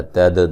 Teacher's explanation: دال پہ قلقلہ کریں گے، را کو موٹا ادا کریں گے